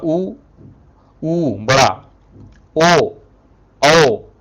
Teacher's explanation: तो यहां पर वृत्तमुखी इसलिए बोला जा रहा है इसको, जब मुख का आकार वृत्त के समान हो जाए जिसके उच्चारण से। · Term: वृत्तमुखी स्वर